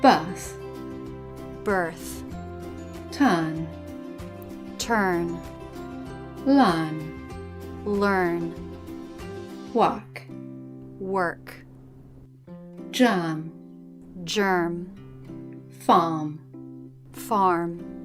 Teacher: when the letter R is in the middle position, in a monosyllabic word and after a vowel, in British English we tend to drop it